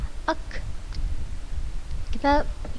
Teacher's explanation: pangkal lidah kita menempel ke langit-langit bagian atasnya, tetapi di depan huruf qaf. Tadi di huruf qaf dia paling belakang, pangkal lidah paling belakang nempel ke langit-langit paling belakang. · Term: makhraj huruf kaf